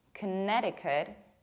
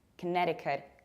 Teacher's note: Then you stress ne, Connecticut, and you pronounce T like a strong American T, which is something in between d and r.